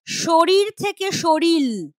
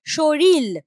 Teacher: দুটো র ছিল, র র, কেমন? এবার এখানে সেটা হয়ে যাচ্ছে র ল। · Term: বিষমীভবন